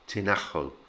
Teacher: the j sound becomes very much like an h sound in spanish so it's tinajo and remember that push on the ah syllable